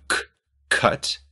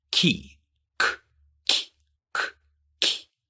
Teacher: with the middle of your tongue raised up near the hard palate, and the back or front of your tongue doing whatever it needs to do to form a consonant, this is palatalization